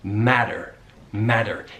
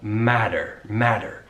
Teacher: He's using the American T, which is what we call a flap T. It kind of sounds like a D